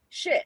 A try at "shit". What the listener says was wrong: No, that shit. Take away the T. No, take away the T. No, shit. Don't put T in.